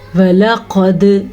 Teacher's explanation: قاف کو پر پڑھنا ہے، دال پہ کلکلا کرنا ہے